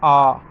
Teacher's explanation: वायु जो है अबाध रूप से यानी बिना किसी बाधा के जो है बाहर निकल जाती है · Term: स्वर